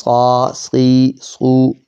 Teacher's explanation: موٹا زبان کی نوک والا حرف ہے نیچے کے دانتوں کے پیچھے موٹا حرف ادا ہونے والا